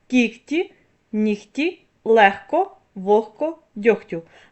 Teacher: Ви чуєте що я вимовляю х а не г хоча ми пишемо в цих словах г